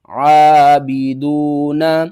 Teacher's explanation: دال کے بعد دیکھیں واو ہے، واو حروف مدہ میں سے ہے، ایک الف کے برابر کھینچ کر پڑھیں گے